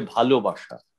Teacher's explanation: যদি কেউ ভালোবাসা বলে তাহলে সেটা হবে ভুল, অর্থাৎ অল্প প্রাণ বলে ফেললো সে, কিন্তু উচ্চারণটি মহাপ্রাণ, তাই হবে ভালোবাসা